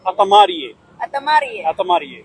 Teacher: So the R's you also roll. So it's a R sound, just like in Indonesian.